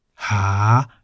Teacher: If we replace the middle-class consonant with the high-class consonant ho heb, we have ha in the rising tone.